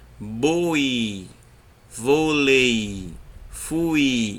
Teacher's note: Então, começa com som forte e termina com som fraco. Começa com a vogal e termina com a semivogal. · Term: ditongo decrescente